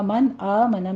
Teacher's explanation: من آمن میں نون ساکن کا قاعدہ اظہار ہلکی کریں گے۔